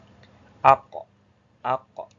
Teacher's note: pangkal lidah aqs lisani belakang lidah yang dekat dengan tenggorokan itu ditempelkan ke langit-langit atas atau sejajar langit-langit atas. · dari pangkal lidah ditempelkan ke langit-langit atas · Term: makhraj qof